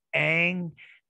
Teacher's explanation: when the N occurs before the G, it becomes velarized because of assimilation, and it becomes similar to the G and the K.